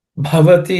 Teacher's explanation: Bhavati, in that bha is aspirated.